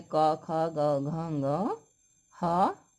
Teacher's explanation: इन सब का उच्चारण स्थान कंठ होता है।